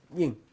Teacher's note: it's a high tone and it's accented